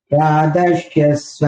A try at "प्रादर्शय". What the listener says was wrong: பிராதர்ஷய, பிராதர்ஷ்ய கிடையாது, பிராதர்ஷய.